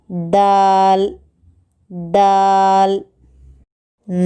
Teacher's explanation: زبان کی نوک کو اوپر کے دانتوں کی جڑ کو لگانے سے دال نکلتا ہے